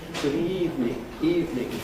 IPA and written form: ˈgʊd ˋiːvnɪŋ (good evening)